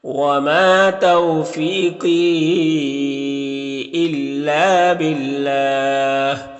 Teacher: با کے نیچے زیر ہے تو اللہ کلام کو باریک پڑھیں گے